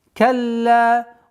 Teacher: Удвоение ляма. потом ударение в размере двух огласовок.